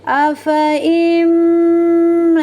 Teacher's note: Cara membacanya, afa imma, fathah bertemu dengan huruf alif, hukumnya adalah mattabi zahir karena alifnya nampak 2 harakat. Lalu huruf mim ini cara membacanya tidak boleh terlalu ditekan kuat-kuat karena huruf mim ini mempunyai sifat tawassut dan gunnah. Jadi ditekan sambil disempurnakan sifat tawassutnya dan gunnahnya.